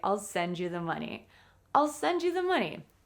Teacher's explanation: We stress the verb because the verb and the noun money they are the most important points in this sentence.